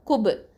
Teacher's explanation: இது என்னது கல்கலத்துல் சுகரா லைட்டா நம்ம கல்கலா கொடுக்கணும்